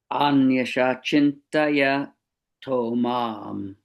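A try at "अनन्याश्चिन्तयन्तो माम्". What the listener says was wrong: Good, very good.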